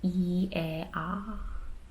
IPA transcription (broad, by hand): i, ɛ, ɑ